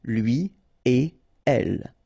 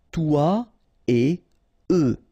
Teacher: So after this conjonction et, like we've got here, you don't make any liaison. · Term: no links after et